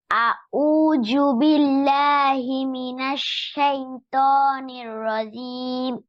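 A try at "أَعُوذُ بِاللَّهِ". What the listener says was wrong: আউযু, নট জু। আউযু, জি, জু, জাল দিয়ে আউযু।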